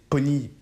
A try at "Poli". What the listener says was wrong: Poli. Répétez après moi, Poli. Avec un L. comme Nike.